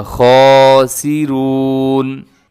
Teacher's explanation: خاسرون میں خا موٹا ہے، اور آگے را بھی پر پڑھا جائے گا